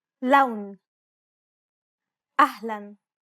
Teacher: Unlike the English L, the tongue is ever so slightly flatter and straighter in Arabic. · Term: Arabic L sound